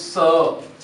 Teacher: दंत्य वर्ण है ये, दांत और जीभ का मेल होता है तब इस सड़क वाले से का उच्चारण होता है। · इस स को हम जो जीभ है, जीभ दांतों के पीछे लगेगी और इसका उच्चारण होगा स।